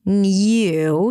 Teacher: The word new, you can pronounce it as new with a y sound, new. So it's an N sound, a y as in yes, new, and then oo as in food.